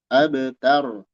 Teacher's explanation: Ba-nya qalqalah, ra-nya tebal.